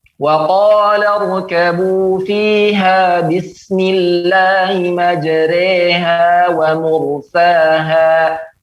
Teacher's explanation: Maka pada poin ini, ya, antara alif dan ya, ya, lebih dicondongkan kepada ya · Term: imalah